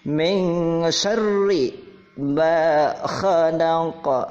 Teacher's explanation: Sya itu dari tengah-tengah lidah, langit-langit.